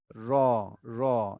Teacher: এই জিহ্বার আগাটা একটু উল্টিয়ে যাবে, গিয়ে উপরে তালুতে লাগিয়ে র, র, একটু উল্টে যাবে, র, র।